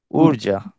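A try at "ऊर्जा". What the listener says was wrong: ঊর্জা, উর, র, র ভাইব্রেট হবে। ঊর্জা ঊর্জা ঊর্জা।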